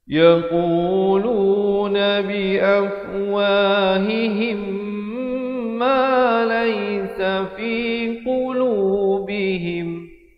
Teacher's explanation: mim mati bertemu mim, idgham mislain saghir. Di sini hukumnya wajib dengung di sini 2 harakat.